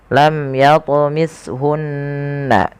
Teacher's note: Kemudian pelafal hunna ada nun berharakat tasydid dan diwarnai dengan warna hijau, yang cara bacanya adalah kita menahan suara bunyi gunnahnya. Lam yatmishunna, tidak langsung lam yatmishunna insun, tapi bukan hanya sekedar tasydid, tapi dia wajib ditahan suaranya.